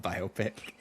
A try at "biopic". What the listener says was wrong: No, don't try to make it into one word. It's 2 separate words.